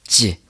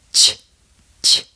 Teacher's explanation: The tongue and lips coordination on this is the same as it is for the letter J, the difference being that you don't engage your vocal cords. So instead of j, it sounds like ch, ch.